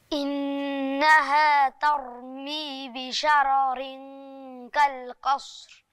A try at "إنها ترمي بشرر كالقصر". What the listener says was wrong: أحسنت.